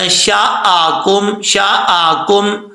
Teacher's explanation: ذال هو الذی انشأکم، یہاں پہ نون ساکن کا اخفاء ہو رہا ہے کیونکہ حروف اخفاء میں سے شین آ رہا ہے تو ایک الف کی مقدار غنہ کیا جائے گا